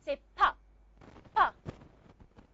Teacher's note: You close the lips. You stop the air completely. Then you release the lips. So you have the airflow coming out of your lips in, let's say in a small explosion of air.